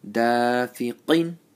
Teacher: Make sure the qaf is full mouth.